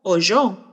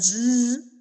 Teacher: Suena como una Y. Ese sonido se conoce como palatal.